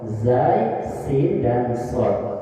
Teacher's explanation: ujung lidah bertemu dengan dinding gigi seri bawah, hurufnya ada 3 yaitu zai, sin dan sod